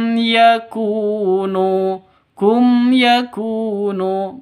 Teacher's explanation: ku dan NU sama-sama eh Mad Thobi'i sama-sama panjang dua ketukan